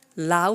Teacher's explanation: আমরা লাউ বলার পর থেমে যাই, আর আমরা তো জানি যে অর্ধ স্বরধ্বনি স্বরধ্বনির চেয়ে অর্ধেক উচ্চারণ হয়।